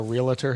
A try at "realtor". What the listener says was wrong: Yeah, there's no extra vowel in there. It's just realtor.